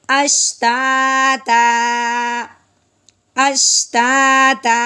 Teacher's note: ہاں جی، وقف کی صورت میں نے پیچھے بھی بتایا تھا، جب الف آ جائے، دو زبر ہوں تو ساتھ الف ضرور ہوتا ہے۔ جب دو زبر کے ساتھ وقف کریں گے تو ایک زبر کو ہم ایک دفعہ ختم کر دیں گے، پیچھے ایک الف اور ایک زبر رہ جائے گا، ٹھیک ہے۔